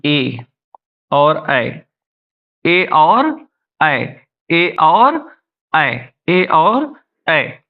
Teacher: ए और ऐ, इनका उच्चारण स्थान क्या होता है? इनका उच्चारण स्थान होता है कंठ और तालु, कंठ और तालु, कंठ और तालु।